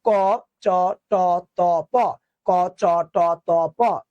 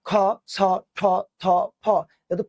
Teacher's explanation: ক চ ট ত প তেমন কোন বাতাস লাগে না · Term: অল্পপ্রাণ